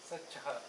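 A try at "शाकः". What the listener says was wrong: It's not sa, it's a long one. It's a long one. Sachkaha means only the sa will be there, the stroke will not be there.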